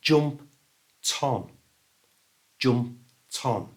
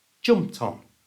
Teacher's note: we move that t sound from the end of jump to the front of on · And if it's followed by a word that starts with a vowel, for example, on, we move that t sound from the end of jumped to the front of on. So it becomes jump-ton.